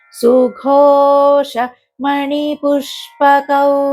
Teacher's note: షాకు పావతు ఇది సంయుక్తాక్షరం కాబట్టి దాని ముందు ఆఘాతం పడుతుంది. పుష్పకౌ అని చదవాలి.